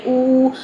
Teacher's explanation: حمزہ کی حرکت کو آپ 2 حرکات لمبا کر دیں کیونکہ ہم نے حرف مدہ میں چینج کرنا ہے، تو اسی حرکت کو آپ 2 حرکات لمبا کر لیں، او، تو یہ دوسرا والا جو حمزہ تھا یہ واو مدہ میں چینج ہو گیا، تو ہم کیا کہیں، او تو، ٹھیک ہے، یہ واو مدہ میں چینج ہو گیا۔